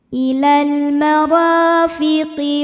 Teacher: Ra mad thabi'i zhahiri karena ada alif didahului fathah. Maka huruf ra panjang dua harakat.